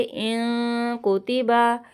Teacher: नून साकिन के बाद काफ़ है, यहाँ पे गुन्ना करेंगे